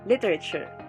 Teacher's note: the syllables are lee rey and sure and the stress is in the first syllable